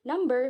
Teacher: the b sound make the lower and upper lips stop the airstream and released it in sudden. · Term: stop or plosive